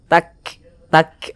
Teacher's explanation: Jadi ada nafas yang mengalir seperti memercik karena huruf Kaf itu salah satu huruf yang memiliki sifat hams